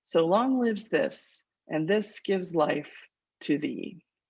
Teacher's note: Iambic pentameter is the metrical pattern that sounds the most like regular language, but it's also a cadence and a repetition of unstressed, stressed, unstressed, stressed that makes it sound poetic. And of course, also the rhyme on the ends.